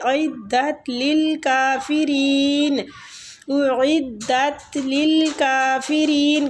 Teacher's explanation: عین حلق سے، حلق کے درمیان والے حصے، · حلق سے، حلق کے درمیان والے حصے، اعدت للکافرین، اعدت للکافرین، کاف کو بھی کھینچنے ہیں، کھڑی زبر ہے اوپر